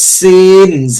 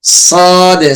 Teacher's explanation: সিন এক পাতলা হবে এবং সদ একটু মোটা হবে